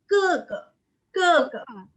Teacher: Kalau misalkan kalian lihat GE, bacanya bukan ge, tapi ke, tanpa aspirasi.